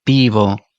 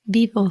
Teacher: Casi rozan los labios, pero no están haciendo un sonido muy fuerte. Pero hay una ligera vibración de ese contacto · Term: una V muy leve